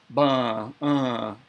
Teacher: ooh uh is the sixth vowel sound of cherokee language and it has the uh sound of bun uh that uh sound so it's slightly nasalized